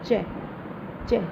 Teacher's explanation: तो अभी अभी हमने पहले भी पढ़ा था कि च का जो है वो तालु होता है, मुंह के तालु भाग से होता है।